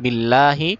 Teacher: বিল্লাহি মোটা করা যাবে না, পাতলা করে